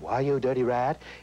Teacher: For example, there is the breathy type voice, which Jimmy Cagney would have.